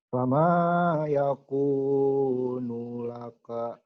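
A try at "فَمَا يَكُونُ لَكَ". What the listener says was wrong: Nunya pendek. Fama yakunu laka. Diulang.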